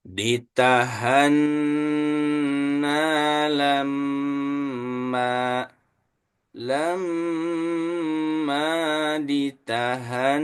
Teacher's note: lam ditahan satu kali diulang ya ditahanna lamma lamma ditahanna begitu ingat untuk ditahan itu n sama mnya ditahan tiga ketukan seperti di jurus dua ditahanna lamma lamma ditahanna begitu sekali lagi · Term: bacaan dengung